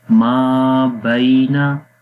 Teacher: یعلم، یعلم ہے، ان کی آواز نرم ہوگی. ما بینا، ما کے بعد الف، الف یعنی یہاں پر مدہ ہے، حروف مدہ میں سے ہے، الف سے پہلے زبر لمبا کریں گے